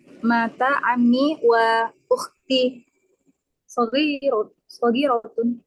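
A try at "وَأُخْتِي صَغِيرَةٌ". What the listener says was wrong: betul wa ukhti sagiratun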